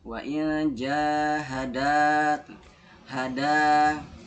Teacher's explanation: Terus wa'in jahadat hada fathah bertemu dengan alif mati. Hadanya panjang karena dia bertemu sama alif mati. Fathahnya bertemu dengan alif mati.